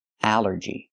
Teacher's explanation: The rule is ALL makes the sound all, like ball and call. But here it makes the A sound, the short A like in apple and black. Allergy. It's 3 syllables.